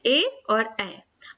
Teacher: अब यहाँ पर कंठ तालु की बात की जा रही, कंठ और तालु, ए आई जब हम बोलते हैं तो हमारी जीभ का जो पिछला हिस्सा है वो ऊपर तालु से जुड़ता है और कंठ से आवाज आती है, इसीलिए इसको हम कंठ तालु बोलते हैं, ए और ए।